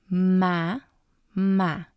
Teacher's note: we have the accent there because the sound of the second ma is a little bit stronger